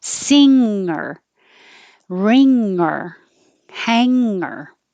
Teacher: a little hook on it which is the n-g combination so the back of the mouth is where your tongue is touching · the back of the mouth is where your tongue is touching. So the back goes up, sing, and the air is forced to go through your nose.